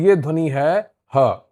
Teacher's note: हा को स्वर यंत्रमुखी या काकल्य ध्वनि कहा जाता है। हा का उच्चारण सीधे गले के भीतर स्वर यंत्र से होता है।